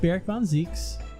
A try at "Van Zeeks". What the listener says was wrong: Van Zeeks, not Von Zeeks. There's an A, not an O.